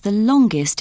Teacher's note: we say the in superlatives with a weak sound the when the following adjective starts with a consonant